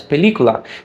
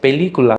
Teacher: That stressed vowel E I fully pronounce, but all the others are kind of less important, so I don't fully pronounce them. I reduce them.